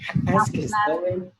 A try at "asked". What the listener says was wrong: No, sẽ đọc là T. Đọc là T, vì thế sẽ đọc là has asked.